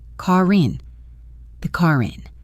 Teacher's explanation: The key sound connection happens with the last two words, car in. Because car ends with an R sound and in starts with a vowel, we link them smoothly. To do this, that R sound really carries over.